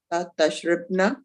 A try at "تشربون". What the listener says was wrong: Yeah, so the ra should have a fatha instead of a kasra. Tashribna.